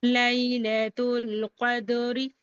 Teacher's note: دینا ہے اور قاف کو دال سے ملا کر پڑھنا ہے، قلقلہ صغرا کرنا ہے دال پر کیونکہ کلمے کے بیچ میں ہے